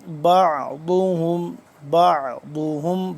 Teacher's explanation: وما بعضهم، بعضهم، با عین زبر با، عین حلق کے درمیان والے حصے سے اور ذرا کھینچ کے پڑھا جاتا ہے